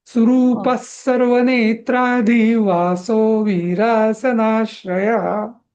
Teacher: तो विसर्ग म्हणायची गरज नाहीये, त्याच रिप्लेसमेंट स येतो. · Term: विसर्गाचंच रूपांतर